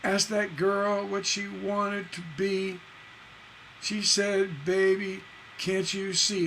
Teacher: There's four stresses on each one of those lines, and they end on the same boom. They end on a masculine ending. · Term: symmetrical couplet